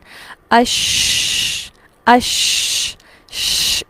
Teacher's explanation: شین کی ادائیگی میں مخرج پر جب زبان لگتی ہے تو آواز پھیلتی ہوئی محسوس ہوتی ہے۔ مثلا اش اش ش، اس طرح سے جو پھیلنا ہے آواز کا، اسے صفت تفشی کہا جاتا ہے۔